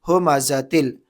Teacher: ہا پیش ہو، میم زبر ما، ہما، زا زبر زا، ہما زا، تا لام دو زر تل، ہما زا تل. تنوین کو لام میں ادغام کر دیا بغیر گنہ کے